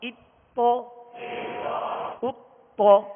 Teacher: حمزہ باریک پڑھیں گے اور تو کو پر پڑھیں گے